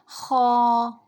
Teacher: یہ حلق کے اوپر والے حصے سے ادا ہوگا، یہ موٹا حرف ہے، یہ پر پڑھا جائے گا